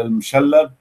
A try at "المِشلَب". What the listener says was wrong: لا لا، والكل يحطون شدة على المشلب، هي بكسر الميم وفتح اللام.